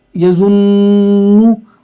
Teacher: और इसमें क्या होता है, गलती क्या की जाती है इसमें, जो नून के ऊपर पेश है इसको खींच देते हैं और तो गुन्ना को नहीं खींचते। गुन्ना तो यजुन ये गुन्ना है, नू ये गुन्ना नहीं है।